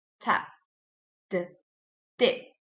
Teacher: The oral passage is blocked by pressing the tongue tip against the alveolar ridge. It is called alveolar.